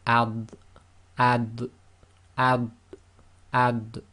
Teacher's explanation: And then we have the dad, which is not qalqala, but it is tafkhim.